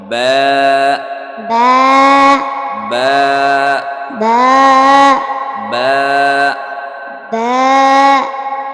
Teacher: এই দুই ঠোঁটের ভিজা অংশ হইতে বা উচ্চারিত হবে। বা باء বা। باء নিচে এক নোক্তা থাকবে, বায়ের নিচে এক নোক্তা আছে।